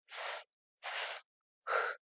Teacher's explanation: 모두 다 긁히며 발음이 되고 있다는 사실을 확인할 수가 있습니다. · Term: 마찰음